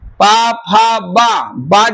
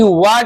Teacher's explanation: दंतो व और ब के उच्चारण में बहुत लोग प फ ब जो है वो सीधे कहां टच कर रहा है ओष्ठ वर्ग का है जबकि व जो है वो दंतोष् वर्ग का है